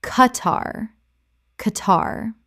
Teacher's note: Two syllables with the Q making a hard K sound, not a KW sound.